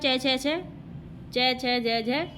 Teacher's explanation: च छ ज झ, ये तालव्य ध्वनि होते हैं